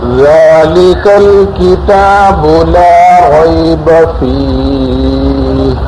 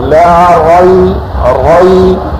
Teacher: لا ریب میں را کو پر کرنا ہے، ہونٹ گول نہیں کرنا ہے